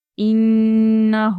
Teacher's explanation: تشدید والا حرف ہے اس لیے ہم یہاں پر غنہ کریں گے، ہو ہم کھینچیں گے، کا میں بھی حروف مدہ ہے اس لیے ہم اس کو کھینچیں گے۔